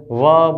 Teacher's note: अने आ व्यंजननुं उच्चारण त्यारे ज शक्य बने छे ज्यारे आपणो होठ नीचेनो होठ આપણો નીચેનો હોઠ દાંતની સપાટીને સ્પર્શ કરે છે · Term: दंत्योष्ठ